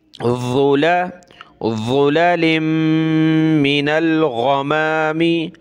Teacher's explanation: फ़ी ज़ुललिम मिनल, नून लाम ज़बर नल, लाम के साथ प्लस होगा नून। ज़ुला, ज़ा पे ज़बान निकाली जाती है, यानी ज़ा पे ज़बान जो है सामने वाले दांत, ऊपर वाले जो दांत हैं उनसे टच करनी होती है सामने